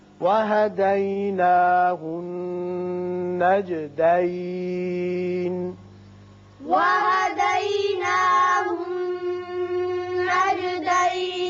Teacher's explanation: یہاں نون مشدد ہے، غنہ کریں گے